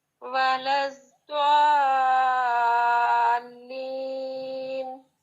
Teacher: 3 الف جتنا اس کو لمبا کرنے کے بعد جب آپ نے لام ادا کرنا ہے تو مد اور لام میں تھوڑا سا پاز آتا ہے